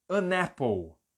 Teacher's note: dessa palavra é aí eu vou emendar e vai ficar annapple olha como eu tô emendando o n